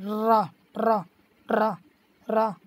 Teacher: लेकिन अब लुंठित शब्द का हम कैसे अर्थ निकालेंगे कि ये लुंठित क्या होता है। देखो लुंठित व्यंजन वह होते हैं जिनको बोलते समय हमारी जीभ का आगे का हिस्सा कंपन करते हुए कोई ध्वनि निकाले